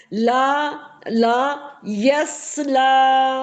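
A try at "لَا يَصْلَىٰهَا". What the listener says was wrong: अब यस बोला आपने फिर से, यस नहीं बोलना मेरे। जी, ला यस ला।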